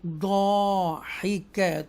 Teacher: ضاد حروف مستعلیہ میں سے ہے اور الف مدہ بھی آ رہا ہے ساتھ, تھوڑا سا کھینچیں گے